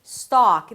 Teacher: The 'stock' is the primary stress so it's going to be longer and higher in pitch.